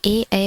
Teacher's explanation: ए ऐ वर्ण कंठीय तालव्य से उच्चारित होने वाली ध्वनियां हैं, कंठीय तालव्य से उच्चारित होने वाली ध्वनियां हैं ए ऐ।